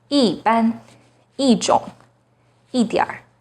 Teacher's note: When 一 is followed by a non-fourth tone, it becomes the fourth tone.